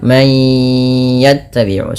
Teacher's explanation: masukkan bunyi suara nun kepada huruf ya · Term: idgham bi gunnah